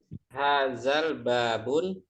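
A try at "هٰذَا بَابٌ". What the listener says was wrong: Hadzal babu. Kalau dia beralif lam, jangan bertanwin ya.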